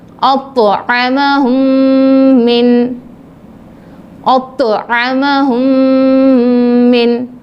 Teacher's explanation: ادغام شفوی یعنی میم ساکن کے بعد میم آ جائے تو میم کو میم سے ملا کر غنہ کے ساتھ پڑھیں گے